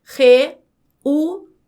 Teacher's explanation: eu tenho um iato porque eu tenho duas vogais, o e o u, que quando na separação de sílabas, essas vogais ficam em sílabas separadas